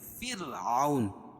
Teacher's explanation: را ساکن سے پہلے زیر ہے تو را کو باریک پڑھیں گے